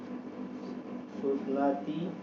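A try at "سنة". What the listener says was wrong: Tahun, sana, ya, sanatan, bukan sunnah. Tulisannya sama, sunnah dengan sana. Kalau sana itu artinya tahun, 23 tahun begitu. Terus sanatan, ya, jangan salah baca, jangan baca sunnah tapi sana.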